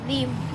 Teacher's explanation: The inner border of the lower lip contacts the upper teeth to create a constriction.